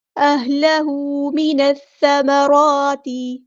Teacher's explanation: अहलहू मिनस्समराती, हाँ सिंपल अदा करेंगे, अहलहू हरकतें मद आई है तो अलिफ के बराबर लंबा करेंगे, नून को हमने सा के साथ मिला देना है, हमज़तुल वस्ल हमारा ड्रॉप हो जाएगा। लाम यहाँ पर लाम शम्सी है, इसको हम ज़ाहिर नहीं करेंगे, सा बारीक नरमी से अदा करना है, सिटी नहीं लेकर आनी।